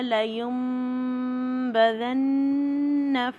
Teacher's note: ناک میں پوری میم کی آواز بنے گی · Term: اقلاب